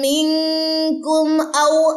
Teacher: میم ساکن کے بعد حمزہ ہے، یہاں پہ غنہ نہیں ہوگا، جبکہ کیا ہو جائے گا، اظہار ہوگا.